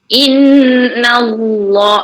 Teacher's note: Lagi Innallah non sabdu wajib guna. Innallah, Allah tu lafzul jalalah ditebalkan. Na tu nipis, jangan Innallah dah nampak tebalkan, dia dah tebalkan nun.